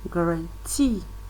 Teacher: the stress is on the second syllable and guarantee grant see the force of the stress is on the third uh syllable